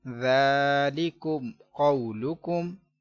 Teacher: میم ساکن کے بعد قاف ہے تو اظہار شفوی کریں گے، گنہ نہیں کریں گے